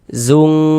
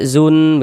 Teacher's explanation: cara membaca ikhfa itu dibaca samar dan berdengung · Kalau ikhfa hakiki abad itu dia lebih condong berbunyi eng ya.